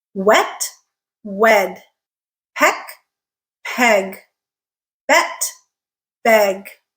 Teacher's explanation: the eh sound is stretched out when it is in a stressed syllable and it is followed by a voiced consonant.